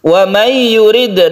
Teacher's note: nun mati bertemu dengan ya, kita baca idgham bi gunnah